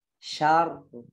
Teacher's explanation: Ra-nya ingat ditaruh di belakang gusi.